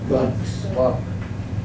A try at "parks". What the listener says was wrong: Parks. Everyone, parks. Parks. Parks. Parks, barks. Hear the difference? Parks, pa pa pa. Barks, ba ba ba. Parks.